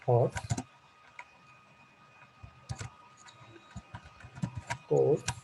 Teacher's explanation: the place of r is taken by a, and that is why a is long here.